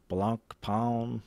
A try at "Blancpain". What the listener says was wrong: It's Blancpain. But you said it like slow, so it was funny.